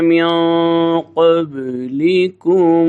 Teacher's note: मिन क़ब्लिकुम यहाँ पे इख़फ़ा होगा जिसको गुन्ना कहते हैं